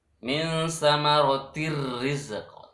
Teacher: Nah, di situ itu ada samaratir rizqa, tanwin bertemu ra. Maka tin yang asalnya samarotin n itu berubah jadi ra, jadi r. Min samaratir rizqa tanpa deng itu idgham bila.